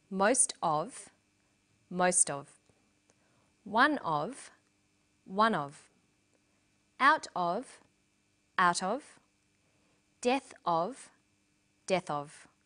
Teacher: the phrases most of one of out of death of but in sentences these phrases will usually become linked together